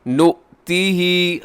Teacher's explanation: حمزہ ہے واو کے اوپر، جھٹکے کے ساتھ بولیے گا اسے